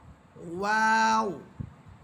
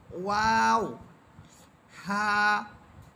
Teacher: ওয়াও হরফের উচ্চারণ হবে দুই ঠোঁট গোল করার পর দুই ঠোঁট এর মাঝে যে শূন্য জায়গা থাকবে ওই শূন্য জায়গা থেকে ওয়াও হরফ উচ্চারিত হবে ওয়াও প্রথমে দুই ঠোঁট গোল হবে এরপর দুই ঠোঁটের মাঝে যে